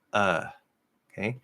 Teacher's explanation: The voice stops before the breath finishes. And that's because we have a certain level of breath in American English that the sounds flow on, and that breath usually ends after the sound.